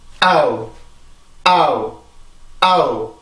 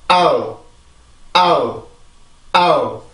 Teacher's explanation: 하지만 이중모음이기 때문에 항상 앞에 있는 모음에만 강세가 오죠. 그러면 앞에 있는 모음에서 성대를 이제 입모양을 만들고 성대를 긴장을 시키고 뒤에 있는 모음을 이렇게 정확히 만들어줄 필요가 없이 소리의 흔적만 남겨주는 거야.